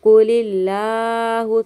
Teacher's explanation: اللہ کے نام کو ہم باریک پڑھیں گے کیونکہ اللہ کے نام سے پہلے زیر آ رہا ہے